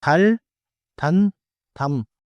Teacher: final 니은 is made with the tongue, and final 미음 is made with closed lips